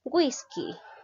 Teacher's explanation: la mayor fuerza de voz recae la sílaba wish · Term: palabra grave